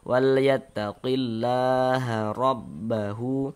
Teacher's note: Baris 1 di atas huruf harokat fathah atau tanda baca fathah, maka huruf ra dibaca tabkhim, baca tebal, sehingga pangkalisan kita naik terangkat ke atas ketika kita mengucapkannya, tebal kan.